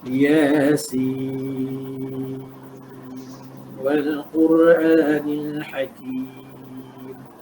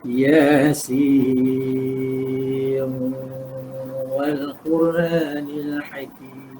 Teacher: Dia ada idgham kat situ. Kita Hafs izhar, tapi Syu'bah idgham.